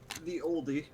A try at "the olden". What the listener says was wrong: No, it's just the old. No, the E is silent.